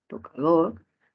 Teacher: última sílaba con mayor fuerza de voz palabra aguda